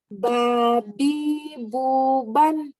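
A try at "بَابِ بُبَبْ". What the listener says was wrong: Kok babi buban? Nggak ada nun itu mah, Mbak. Babi buban, tukang ban, nggak ada. Babi bubab. Bubannya iklab ya. Nah, ini nun mati ketemu ba ada M-nya. Itu kalau di Quran. Ini namanya iklab. Iklab. Ya, iklab. Bubam gitu. Bubam.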